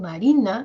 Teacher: en Marina que es el sujeto miren Marina el tono sube es decir no los puntitos van a ir subiendo Marina Generalmente